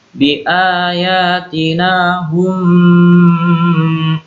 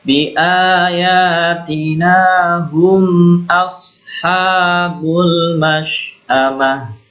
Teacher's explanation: hum ini izhar ya, jelas. Hum ashabul, jadi jangan didengungkan.